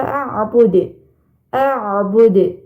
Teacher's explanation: huruf dalnya dipantulkan ini termasuk huruf Qalqalah